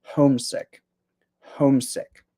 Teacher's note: I think that the stress is on the first syllable.